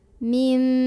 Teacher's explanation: Mim ada hukum iklab karena ada nun sukun yang bertemu dengan huruf ba. Maka cara membaca nun sukunnya adalah diubah dulu jadi bunyi mim sukun ya. Jadi bukan an lagi, bukan min, tapi mim.